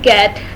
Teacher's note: Ga is a velar stop, also called plosive, because it is a sound which is produced with the tongue coming in contact with velum. Ga is voiced as it is articulated with vibration of vocal cords.